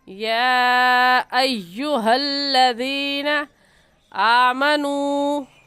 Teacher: مد متصل اور مد واجب، کیونکہ حروف مدہ کے بعد حمزہ اسی کلمے میں ہے